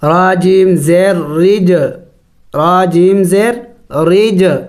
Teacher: جیم ساکن ہے حروف قلقلہ میں سے ہے قلقلہ کریں گے یعنی ہلا کے پڑھیں گے را جیم زیر رج حروف قلقلہ 5 ہے قاف طا با